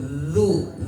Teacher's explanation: Dal sifat tarkik tipis maka tipiskan dulu baru didomahkan. Dia langsung kebal du jangan du. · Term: dzal